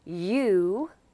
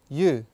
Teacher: The next vowel we're looking at is the oo vowel. It's long and tapers off into a slight W sound at the end in standard British English, but in Glaswegian, it doesn't.